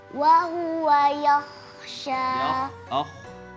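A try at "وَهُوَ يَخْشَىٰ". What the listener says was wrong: Ke belakang. Yakhsha. Kho itu ya. Pertama dia huruf tebal. Lidahnya nggak usah ke depan. Nggak usah. Yakhsha.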